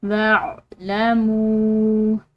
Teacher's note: میم کے بعد واو ساکن ہے، اس کے اوپر چھوٹی مد ہے تو اس کو ہم لمبا ادا کریں گے